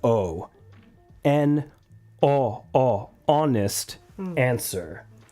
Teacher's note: in this word the H is silent we don't say the H we don't pronounce h